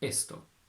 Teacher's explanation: In Spanish, you only have a closed e, esto.